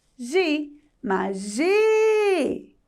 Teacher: Perceberam que o gi teve um destaque? Porque gi é a sílaba tônica.